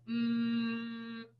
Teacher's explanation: if you say this sound and like mmm and you plug your nose all of the air stops and the sound completely stops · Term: M sound